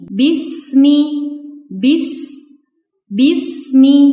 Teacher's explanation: terdapat huruf sin sukun yang dibaca dengan mengalirkan udara atau desis. Karena huruf sin memiliki sifat saofir, jadi bacanya seperti ini.